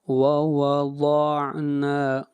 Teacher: ووضعنا ضاد، ضاد کو موٹا پڑھیں گے، ضاد حروف مستعلیہ میں سے ہے